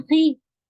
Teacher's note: खा के नीचे अगर कसरा है खी, और आप इखराज खा को ई से मिला रही हैं, यानी कसरा से मिला रही हैं, तो वो थर्ड लेवल का हैवी होगा